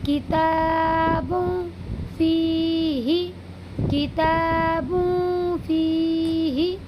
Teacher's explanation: دو پیش کی تنوین کی آواز کو ناک میں چھپا کر پڑھیں گے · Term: اخفا